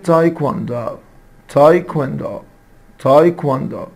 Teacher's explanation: لاحظ إن الدبليو هنا منطوقة، يعني ما أقولش تايكوندو، no it's تايكواندو.